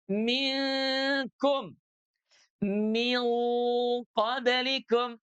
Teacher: kalau huruf nunnya bertemu dengan huruf kaf, maka huruf nunnya dia ditarik ke belakang tuh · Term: ikhfa